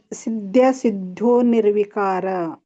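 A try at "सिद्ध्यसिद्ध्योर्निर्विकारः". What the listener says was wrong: ಅಲ್ಲಿ ನೀವು ಸಿದ್ಧ್ಯೋ ಕೂಡಿ ಹೇಳೋರಾದ್ರೆ ಸಿದ್ಧ್ಯೋರ್ ಹೇಳ್ಬೇಕು.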